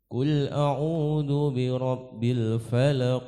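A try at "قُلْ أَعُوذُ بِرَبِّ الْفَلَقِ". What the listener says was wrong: Qul, jelas huruf qof, qo, qul, qul.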